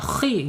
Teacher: huruf isti'la walaupun dia kasrah harus dibaca tebal